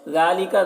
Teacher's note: ذال کے اوپر کھڑا زبر ہے، ایک الف کے برابر کھینچ کر پڑھیں گے